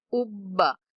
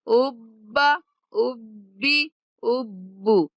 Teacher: اینڈ پہ ہا کی آواز نہیں آنی چاہیے